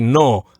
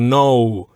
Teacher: Then no, just be careful you don't pronounce it the English way, with which would have that O sound at the end. In Spanish, just eliminate that U sound at the end.